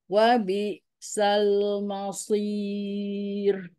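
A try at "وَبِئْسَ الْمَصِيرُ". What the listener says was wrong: Hati-hati, mainnya jangan jadi mall, tapi ma tetap tipis. Shotnya yang tebal.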